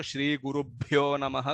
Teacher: यहाँ पर भी भ है, महाप्राण भ, जहां पे सांस ज्यादा निकलता है